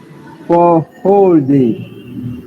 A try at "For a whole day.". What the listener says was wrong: But before whole, there is something. But she's barely pronouncing it, but she's pronouncing something. For a whole day. For a whole day. And when you say it fast, it's like this. For a whole day. For a whole day.